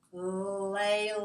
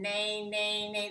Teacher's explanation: So make sure you go through your nose when you say nay. Listen to the difference between lay, that's oral, and nay, that's nasal.